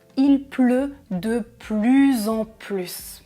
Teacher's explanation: quand il y a une pause ou quand plus se trouve à la fin d'une phrase, très souvent on prononce ce S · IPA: [plys]